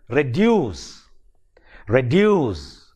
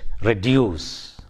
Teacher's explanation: in words like reduce reduce it has two syllables and the second syllable is stressed